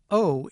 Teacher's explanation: our tendency to have a little raising of the tongue at the end of our production of this vowel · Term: non-phonemic diphthongs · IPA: [oʊ]